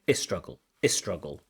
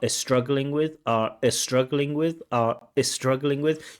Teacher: This is a feature of Iranian English that could be seen as a pronunciation mistake, this adding of the uh